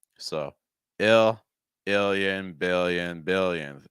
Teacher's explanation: Short I sound with the dark L.